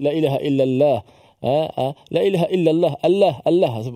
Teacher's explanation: perkataan Allah itu ditebalkan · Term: Allah yang tebal